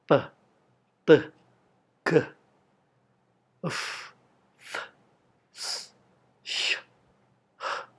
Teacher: Mereka adalah voiceless consonants karena tidak ada getaran dari pita suara.